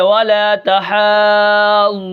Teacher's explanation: میں نے وقف کیا، نون کو ساکن کر دیا